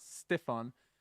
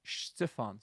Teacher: S beside a slender vowel like an i makes a kind of a sh sound whereas an S beside an A or U makes that sound